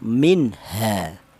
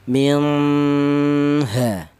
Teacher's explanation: ada nun mati bertemu dengan huruf ha. Cara bacanya ini dibaca jelas. Ini namanya izhar ya.